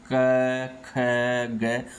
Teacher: इसकी जो ध्वनियाँ है वो कंठ से निकलते हैं। कंठ मतलब गले से निकलते हैं।